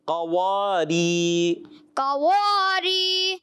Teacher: اب دیکھیں قاف موٹا, واو باریک, ری باریک.